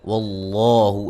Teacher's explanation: لفظ اللہ کو خوب موٹا ادا کریں گے، اس سے پہلے حرف پر زبر ہے